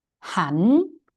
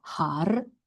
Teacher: However, it's a rule in Thai language that whenever a syllable ends with รอเรือ, ends with this guy, the R becomes N sound. So it's actually han instead of har.